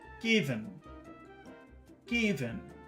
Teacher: normally I is a very short sound, but here the accent falls on I, so it becomes long. So it's unnaturally long.